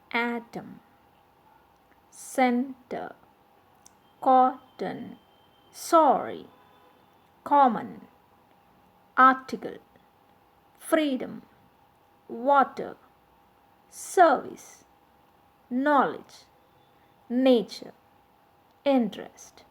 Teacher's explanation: In the following disyllabic words, the stress falls on the first syllable.